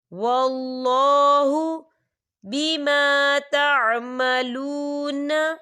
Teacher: اللہ کا نام پر پڑھا جائے گا کیونکہ اللہ کے نام سے پہلے زبر ہے۔